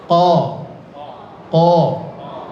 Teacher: Enggak boleh dibaca o, jangan. Buka saja sedikit posisi mulutnya. Ko. Tapi bukan juga ka ya, bukan ka, tapi ko. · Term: huruf qaf